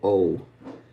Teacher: So, if you want to kind of nail this dip thong, say the Spanish O a little bit longer, O. And then round your lips a little bit more at the end, almost like you're doing a W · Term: diphthong